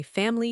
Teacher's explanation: I learned family 3 syllables, but native speakers say family 2 syllables. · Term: elision